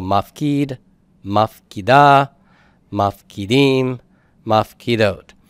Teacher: these vocalic endings here are going to pull the stress to the end for the participle